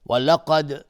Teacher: قاف از حروف استعلاء و دالم قلقله میخواد